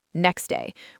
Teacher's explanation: next day often becomes next day with the t sound simply not being pronounced. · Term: elision